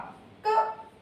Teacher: क कम आवाज निकल रही है कम मात्रा में वायु निकल रही है तो ये हमारा हो गया अघोष